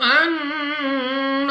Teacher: نون مشدد غنہ کر کے پڑھیں گے، ناک میں لے جا کر پڑھنا ہے